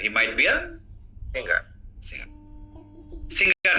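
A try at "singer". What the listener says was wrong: না গ উচ্চারণ হবে না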